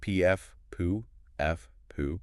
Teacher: You feel a definite puff of air on your hand for each one. >> Right. That's the air creating the sound.